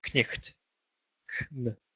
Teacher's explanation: You had to pronounce both the K and the N.